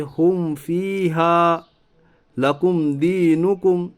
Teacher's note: میم ساکن کی آواز کو ظاہر کر کے بلا گنا کے جلد پڑھیے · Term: اظہار شفی